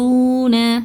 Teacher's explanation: ஸோ இது வந்து வாவு மத்தா 2 ஹரக்கத்தை நீட்டி ஓதுங்க